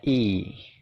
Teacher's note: bacanya itu i, nyengir gitu ya, jadi agak panjang. Suaranya adalah i, kayak gitu ya.